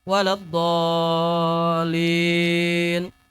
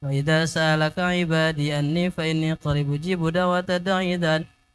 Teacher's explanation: di akhir ayat itu bisa datar bisa turun, di akhir ayat itu mad arid ya bisa turun, tapi jangan naik